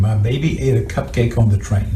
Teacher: Her voice is very strained. It's very rough. We hear that um there's a lot of air escaping through the nose. She sounds a little bit hyper nasal.